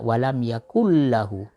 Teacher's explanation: Nun yang mati bertemu dengan lam itu idgham bila gunah.